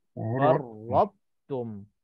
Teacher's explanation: kita nak kena muncung sikit untuk ta, kekalkan sifat tebalnya, sifat kuatnya